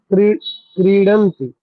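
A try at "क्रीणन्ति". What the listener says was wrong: क्रीणंती। हाँ, डा कर देंगे ना तो वही सड़क से सड़क, फिर क्रीणंती।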